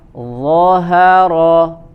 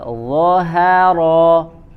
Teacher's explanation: dha-nya tebal, ha-nya tipis, ro-nya tebal. Zahara. Nah, di sini ro-nya tebal karena dia berharokat fathah.